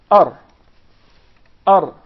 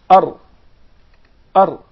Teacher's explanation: The letter Ra is articulated from the tip of the tongue.